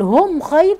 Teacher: ميم ساكنه و بعد خ اظهار شفوي